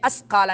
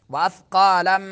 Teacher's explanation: زبان کی سرا جب سامنے دانتوں کے سرے سے لگے تو سا ادا ہوتا ہے